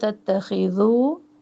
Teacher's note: تتخذو خا موٹا پڑھنا ہے، ذال کو نرم پڑھنا ہے ، تو خا کے ساتھ ذال کو بھی موٹا نہ پڑھے،